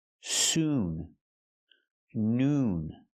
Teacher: It's the long ooh sound. Not uh like good and book. Not soon, but soon. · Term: long oo sound